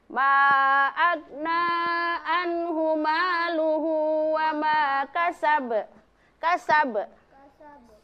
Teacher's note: qalqalah kubra dipantulkan tetapi tidak terlalu keras ya, tidak terlalu tebal